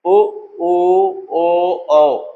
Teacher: जिनके उच्चारण में होठ गोल हो जाते गोलाकार हो जाए वृत्त के रूप में हो जाए वो वृत्त मुखी